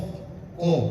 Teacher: Isti'la itu terangkat. Jadi dia berat hurufnya qof.